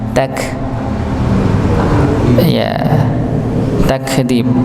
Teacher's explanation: bukan dipantulkan tapi dialirkan nggih, dialirkan ya, huruf kafnya